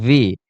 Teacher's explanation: বি না, এটা হবে ভি। মানে ভি, উপরের দাঁত নিচের ঠোঁটে লাগবে, হ্যাঁ? ভি, ভি, এটাকে আমরা বলতাম নরমালি ডাবল-ইউ।